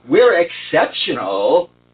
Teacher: put more emphasis on exceptional the second time you say it